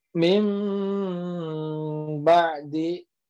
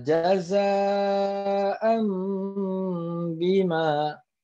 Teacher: Nih, yang tadinya aslinya min ba'di, dia berubah ya, nun sukunnya berubah menjadi ke huruf mim, jadinya mim ba'di. Atau jaza aslinya jaza'an bima. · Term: iqlab